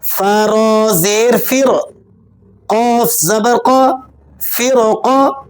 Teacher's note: را کیوں موٹی ہو رہی ہے؟ اسی کلمے میں را ساکنہ کے بعد حروف مستعلیہ میں سے قاف آ گیا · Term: را کو موٹا